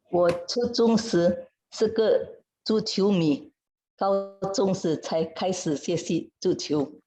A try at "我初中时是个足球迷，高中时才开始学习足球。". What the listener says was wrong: Ibu, jadi nada duanya jangan terlalu pendek ya. Jadi 才开始学习。